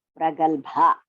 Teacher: Ga is alpa prana. Bha is mahaprana.